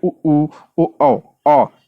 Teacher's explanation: बोल के देखेंगे उ उ उ औ यह क्या होगा ठ जो होठ है वो गोल हो जा रहा है तो यही है तो इसमें क्या पूछा था आवृत मुखी नाम